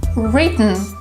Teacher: You don't really pronounce the sound T but it looks like the air stops somewhere in the throat and it comes out of your mouth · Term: Glottal T